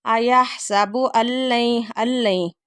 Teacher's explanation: نون ساکن کے بعد لام آ رہا ہے، یہاں پہ غنّے کے بغیر ادغام ہو رہا ہے